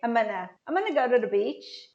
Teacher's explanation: Só que eu pego esse gonna e reduzo para Anna